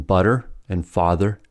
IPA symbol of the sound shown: ər, ɚ